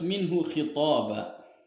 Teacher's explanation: idhar halki di sini sebab nun sukun bertemu dengan huruf ha di depannya